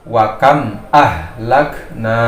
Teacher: mim sukunnya dibaca jelas tanpa dengung. Jadi dia tidak boleh didengungkan dan juga tidak boleh ada pantulan. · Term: idhar syafawi